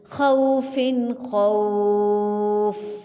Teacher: اگر رواں کریں گے تو عین منون ہے، اس کے بعد حروف حلقی میں سے حرف خا ہے، اس لیے اظہار حلقی ہوگا۔ آگے خو جو ہے یہ وہ لین ہے، کیونکہ وہ ساکن سے پہلے زبر آ رہی ہے